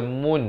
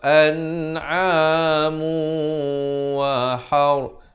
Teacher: Tapi bila datang waw jadi hukum idgham bi gunnah. Jadi hukum idgham bi gunnah. Jadi kena masuk beserta dengung.